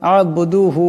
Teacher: আব্বুদুহু এখানে বা সাকিন বা কলকলা হরফ আওয়াজটিতে একটি টক্কর খাবে আওয়াজটিতে একটি ঝটকার মতন একটি শব্দ হবে উচ্চারণ হবে এমন করে এখানে রাকে মোটা আওয়াজে পড়তে হবে এখানে